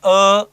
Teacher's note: उच्चारण करते समय अ कंठ से निकलता है स्वर